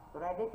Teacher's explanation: Predict là động từ trọng âm rơi âm tiết thứ hai